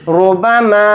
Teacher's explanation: را کے اوپر پیش ہے تو را کو موٹا یعنی پر پڑھیں گے